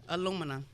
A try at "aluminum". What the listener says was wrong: No, You flip-flopping that M and that N.